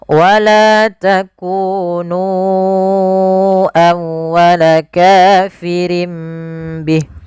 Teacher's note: Pada lafal la dan ku kedua-duanya kita hukumi mad thai. Panjangnya dua harakat. fathah bertemu alif dan domah bertemu wau.